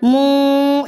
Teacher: नून साकिन की आवाज़ को नाक में छुपा लिया जाता है। मुंज़िरीना मुँ, ना कि आपने मुन कहना है, ना आपने मुन कहना है। · मुंज़िरीना मुँ, ना कि आपने मुन कहना है, ना आपने मुन कहना है। आपने ज़ुबान के कोने को जो नून का मखरज है ना उसे टकराने नहीं देना, उसके साथ नहीं लगने देना। मुँ, आवाज़ को छुपा लेना है, नाक में छुपा लेना है। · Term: इक्फ़ा